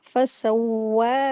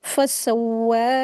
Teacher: वाव के लिए होठों को हमेशा गोल करके रीडिंग करते हैं। सीन को पढ़ते वक्त सीटी की जैसी वॉइस निकालेंगे और वाव के ऊपर खड़ी जब इसको दो हरकत खींच के पढ़ेंगे।